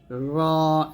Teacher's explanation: র জিহ্বার আগার উল্টা পিঠ তার উপর উপর সঙ্গে লাগাবো র মোটা হবে